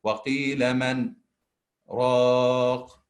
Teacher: We don't hide the noon, we don't make any nasal sound, okay? Or we don't hide the noon because ra is one of the idgham without ghunna, but we pronounce noon clearly. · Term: idhar